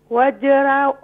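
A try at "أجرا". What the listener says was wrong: واو نہیں ہے, واو نہیں ہے. اجرا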